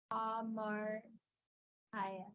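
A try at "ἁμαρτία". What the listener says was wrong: Remember, there's a tau. There's a tau. Close. It's a shortened version of the iota sound. yeah, that's like a what you did was like a very strong one.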